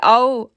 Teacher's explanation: یہاں پہ لین لیٹر ہے، اس کو نہ تو کھینچیں گے اور نہ ہی جھٹکا دیں گے. نرمی کے ساتھ پڑھیں گے